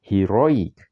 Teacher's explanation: You can see the stress is on the second syllable